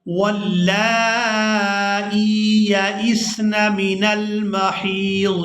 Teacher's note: یا ساکن ہو اور اس سے پہلے والے حرف کے نیچے اگر زیر ہو تو وہ یا مدہ ہوتی ہے، اور اس کے ساتھ جو بھی حرف ملے اسے ہم نے کھینچ کر ادا کرنا ہوتا ہے۔ تو یہاں ہم حمزہ کو یا کے ساتھ ملاتے ہوئے کھینچ کر ادا کریں گے